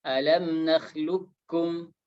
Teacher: Idgham kamil maksudnya bahwasanya qafnya tidak dibaca lagi. Ya, qafnya tidak dibaca, langsung menjadi kaf.